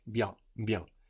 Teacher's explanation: we have the N on the end. We're swallowing that into the vowel before, into that E, so it sounds like bien, bien.